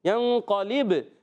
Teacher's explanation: با ساکن ہے، کلکلا ہوگا، آواز لوٹ کر آئے گی